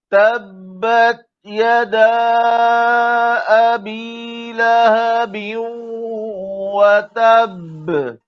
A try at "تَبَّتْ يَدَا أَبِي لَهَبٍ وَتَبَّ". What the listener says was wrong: वतब ये तशदीद भी करनी है और इसी तरह से हल्का सा कलकला करना है, इसमें ज्यादती नहीं करनी। वतब ये काफी है, वतब ये नहीं।